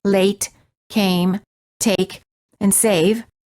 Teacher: the lips are not rounded and they are relaxed and the tongue is tense moving from mid High position to high position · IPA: /ei/